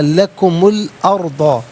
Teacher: لکم الارض، لکم میں میم پر پیش ہوگا، اسے الارض کی لام ساکن کے ساتھ ملائیں گے، درمیان میں سے الف یعنی حمزہ کو حذف کیا جائے گا۔ ارض میں را ساکن ما قبل حمزہ پر زبر ہے، را ساکن کو پر کر کے پڑھا جائے گا